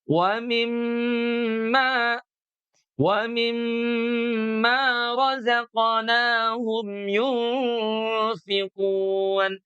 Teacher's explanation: Sebelumnya ada kata mi. Nah, dari mi ke mim sukun inilah yang harus ditahan selama dua ketuk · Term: mim mati